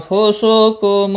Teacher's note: نون ساکن کے بعد فا آیا ہے، اخفاء حقیقی ہوگا